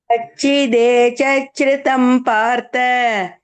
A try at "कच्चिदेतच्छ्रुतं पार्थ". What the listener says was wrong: தேதச்ச நீங்க தேச்ச இச்சின்றே.